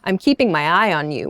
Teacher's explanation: with that downward intonation sounds suspicious